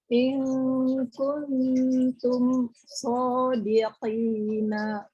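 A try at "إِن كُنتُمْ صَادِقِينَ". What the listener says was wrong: yang kuntumnya hati-hati tidak samar ke huruf N ya. Langsung kung ke bunyi ang.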